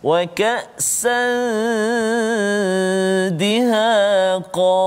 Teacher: Sembunyikan nun tu kan berserta dengan dengung bertemu dengan dal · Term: Ikhfa